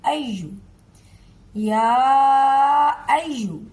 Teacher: या अय्युहल काफिरून, देखिए या खड़ी ज़बर मद या, हमजा पर अपनी हरकत है, हमजा ज़बर आ, हमजा ज़बर आ, या आ। जब आगे या पर तशदीद आ गई है तो इस हरकत को हम आगे वाली या से मिलाएंगे